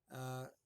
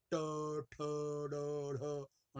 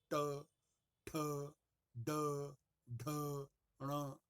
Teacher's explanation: ये जो मूर्धन्य वर्ग है, इसमें जीभ का पिछला हिस्सा ऊपर उठ करके तालू में लग जाता है, जिसे हिंदी में मूर्धा कहते हैं।